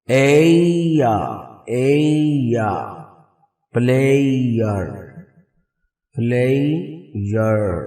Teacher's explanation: ٹرفتھونگ، تین آوازیں بھی آتی ہیں، یعنی کہ تین واول کی طرح لگتا ہے